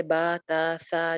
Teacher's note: याए मद्दा, इसको भी एक-एक अलिफ लंबा करते हैं